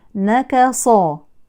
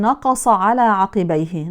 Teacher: وكذلك ننتبه للكاف المجاورة للقاف، فالكاف إن فخمت تحولت إلى قاف، والقاف إن رققت تحولت إلى كاف